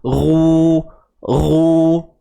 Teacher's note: Muncung itu berlaku bukan sebab huruf ra itu tebal, tetapi sebab huruf ra itu berbaris hadapan. Sebab tu bibir kita muncung. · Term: muncungkan bibir